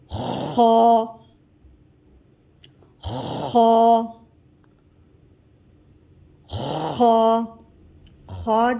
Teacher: اوپر کا حلق سے خا کی ادائیگی ہوگی۔ خا، خا، خا، خا جب ہم ادا کریں گے تو گلے کو صاف کرتے ہوئے ادا کریں گے۔